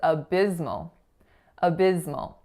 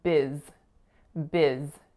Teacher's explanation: The first syllable is a really short schwa, and that second syllable is biz, biz